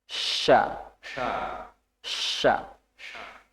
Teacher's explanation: Tengah lidah mendekat ke langit-langit bagian atas dan udara melewati melewati celah tersebut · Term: syin, shin